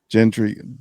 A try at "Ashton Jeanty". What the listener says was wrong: Genty. There's no R. There's no gentry.